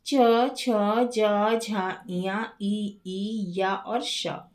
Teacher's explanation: अब जो तालव्य वर्ण है तालव्य शब्द तालू अर्थात मुंह की छत है ना से बना है। जब बोलते समय जीभ तालु से लगती है तब जो वर्ण निकलते हैं उन्हें तालव्य वर्ण कहते हैं।